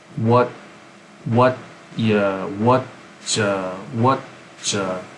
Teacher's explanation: the T combines with the Y from ya. What ya, what ya.